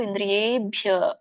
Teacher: ಯ ಒತ್ತಿದೆ ಮತ್ತೆ ಯ ಕ್ಕೆ ದೀರ್ಘ ಇರೋದ್ರಿಂದ ಎಳಿಬೇಕು